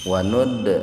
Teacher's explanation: huruf dal yang sukun di tengah-tengah kata, jadi dibacanya sepintas saja, atau qalqalahnya kecil ringan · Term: qalqalah sugro